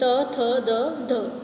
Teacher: दंत्य। जिन व्यंजनों के उच्चारण में जीभ की नोक दांतों का स्पर्श करती है वे दंत्य व्यंजन होते हैं।